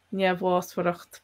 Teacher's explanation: The first MH is a V sound, and then the BH and the MH as W sounds.